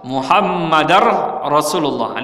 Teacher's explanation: Jadi Muhammadar Rasulullah, jadi idghamkan dal kepada ra, Muhammadar Rasulullah.